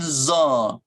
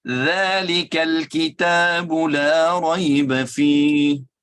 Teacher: lidah sudah keluar dari bagian dalam dan sentuh ujung gigi seri atau gigi kacip atas